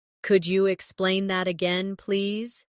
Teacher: Could you sounds like could ya, naturally.